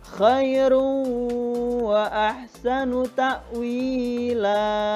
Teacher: Berarti hukum bacaannya adalah idgham bihunah. Dibaca berdengung, memasukkan dengan dengung.